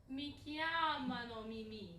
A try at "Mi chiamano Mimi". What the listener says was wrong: You said it's too fast. Because when you go to sing it, it's going to be more drawn out. So we want you to be in the ballpark. They call me Mimi. Mi chiamano Mimi.